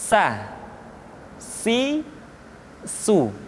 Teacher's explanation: ujung lidah di antara dua gigi seri kita. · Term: huruf sa